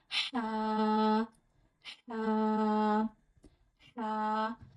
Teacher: याद रखिए हा अदा होता है हमारे गले के दरमियान वाले हिस्से से।